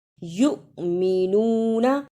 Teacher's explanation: جس حمزہ پر جزم ہو اس پہ تھوڑا جھٹکا لگا کر پڑھتے ہیں